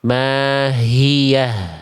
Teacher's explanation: H besar itu mengalir nafas, mengalir suara. Bukan sedikit mengalir, tapi mengalir.